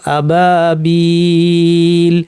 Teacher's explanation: আবাবিলা শব্দে আমরা যদি থামি, এখানে আসলে লামের উপর জবর ছিল, থামার কারণে আমি সুকুন দিয়ে থামলাম, আবাবিল। এই সুকুনটাকে আমরা বলছি অস্থায়ী সুকুন, কারণ শুধুমাত্র ওয়াকফের ক্ষেত্রে এটা আসছে।